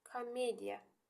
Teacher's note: Əgər O-un üstünə vurğu düşərsə, vurğu düşsə bu Olacaq O. Yox, əgər O-un üstünə vurğu düşmürsə, bu tələffüzdə olacaq A.